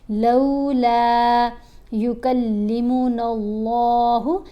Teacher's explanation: یہاں اللہ کی لام کو ہم موٹا پڑھ رہے ہیں.